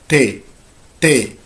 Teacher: تي عشان نقولها لازم نرفع اللسان كده تمام لفوق تي تي على سقف الحنك بطرف اللسان ققول تي تي يبقى ده اسمه حرف تي وبيكتب زي ما